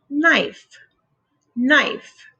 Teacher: The K is silent, so it only makes the N sound